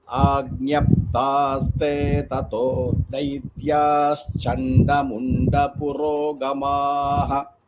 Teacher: Daityaha and Chanda will combine to form that ish sound, like Shiva, like Shakara sound.